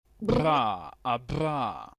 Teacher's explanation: बहुत ही quick vibration में आप मूव कर रहे हैं, that is known as a ट्रिल